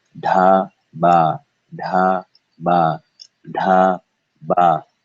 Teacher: Da. Remember, you should feel air only on da. You should feel no air on ba. Air on the B sound is bad.